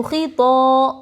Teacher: الف سے پہلے طا کے اوپر زبر حروف مدہ تھوڑا کھینچ کر پڑھے